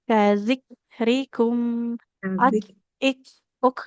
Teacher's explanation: Nah, huruf kafnya harus ada aliran nafasnya ya. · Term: huruf kaf sukunnya